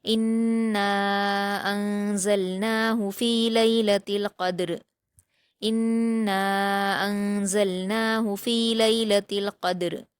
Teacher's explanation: دال کو قلقلہ کے ساتھ اچھے سے ادا کریں گے